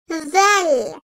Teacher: Vel, dil ucunun ön dişlerin arasına hafifçe girmesiyle çıkarılan peltek sesli bir harftir. Yumuşak ve ince seslidir.